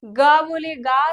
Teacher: गा से बोलेंगे तो कंठ का प्रयोग करेंगे